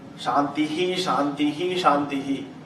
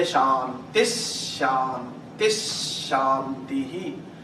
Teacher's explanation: When visargam is followed by Sha, for example, you don't say Shantihi, Shantihi, Shantihi. You say Shantis, Shantis, Shantihi. Visargam followed by Sha becomes Ish.